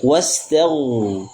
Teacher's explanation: Ghain dibaca tebal dan diadarkan suaranya.